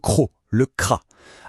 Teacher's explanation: Attention, celui-là, il a un son bien particulier, un son gutural qui vient vraiment du fond de la gorge